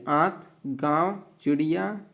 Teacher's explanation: अनुनासिक के उच्चारण में नाक से बहुत कम सांस निकलती है मुख से अधिक